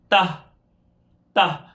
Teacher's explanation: ہماری زبان سامنے والے دانتوں کے اوپر کے سامنے والے دانتوں کی بیک سائڈ پہ لگ رہی ہے، تو یہاں سٹارٹنگ لے رہی ہے، تو تا کا مخرج یہی ہے۔